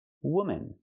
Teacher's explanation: The second syllable is relaxed and closed. Woman. One woman.